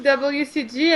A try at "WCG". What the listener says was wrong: WCG. I like how you say it like Wheat makes fun of it. You prolong the W when you say it.